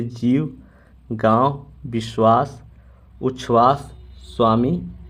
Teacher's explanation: और बासी वाह और बाह हिंदी शब्दों के अंत में और हिंदी संस्कृत शब्दों के संयुक्त व्यंजनों में व के उच्चारण में ओट दांतों की स्पर्श नहीं करता